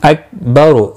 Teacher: را پیش کی وجہ سے پر پڑھا جائے گا، کاف ساکن کو ہلانا نہیں ہے